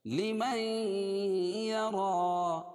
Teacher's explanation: لِمَن یَرَى، لِمَن نون ساکن کے بعد ادغام مع الغنہ کے 4 حرفوں میں سے یا ہے، اس لیے اس کو غنہ کر کے اس میں پڑھیں گے